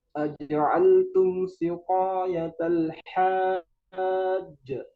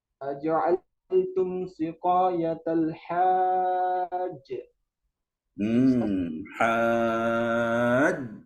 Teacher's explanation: berhenti di huruf jim, disukunkan jimnya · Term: Qalqalah kubra